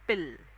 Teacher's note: pill वाला जेव्हा pronunciation आपण करतोय ना, आपली टंग अपर टीथच्या मागे असते